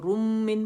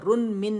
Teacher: اب یہاں پہ رن ہم نے نون کھولا تو ہمارے پاس نون ساکن آیا، نون کی آواز میم متحرک میں چلی گئی تھی تو یہ کیا ہو گیا، نون اومٹ ہو گیا اور میم کی آواز کو پڑھا جائے گا. روم من پڑھے گا، رن من نہیں پڑھا جائے گا، روم من پڑھا جائے گا.